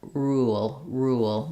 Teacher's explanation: my mouth will naturally make the W shape as I'm moving from a rounded to an unrounded vowel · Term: vowel to vowel linking